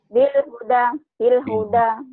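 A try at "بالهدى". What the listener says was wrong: Bilhuda panjang.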